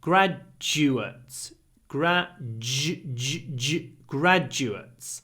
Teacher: the stress is at the beginning the du is pronounced a bit like a j